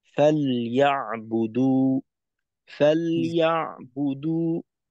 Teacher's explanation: লামে আরেকটু সময় দিবেন, অন্যথায় কিন্তু লামের জজমটা স্পষ্ট বোঝা যায় না। ফালইয়াবুদু ফালইয়াবুদু, অন্যথায় আংশিক জেরের কাছাকাছি চলে যায় আর কি।